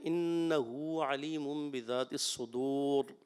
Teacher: را کو پر کرنا ہے اور تکرار اصلی نہ ہو